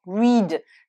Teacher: Donc c'est un i long, mais au prétérit et au participe passé, le EA ici se prononce E et non pas I